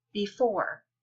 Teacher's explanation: the first syllable is not stressed the second one is stressed it's louder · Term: iambic